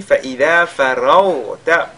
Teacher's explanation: la lettre ra avec le tafkhim, de même que le rayn qui suit, qui est sakina, qui est lui également avec le tafkhim